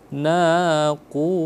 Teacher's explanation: Karena huruf sebelumnya itu berharokat dhammah, ya, dhammah. Naqur dhammah, maka dia dibaca tafkhim, ditebalkan.